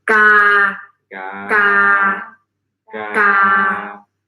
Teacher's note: Middle tone, it's very neutral, very flat.